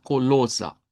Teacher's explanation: Colosa con una eh a al final una a centralizada